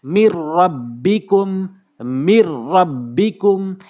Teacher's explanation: কোনো গুন্নাহ করা যাবে না এই নুন সাকিনকে এবং এই তানভিনকে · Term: স্পষ্ট গুন্না ছাড়া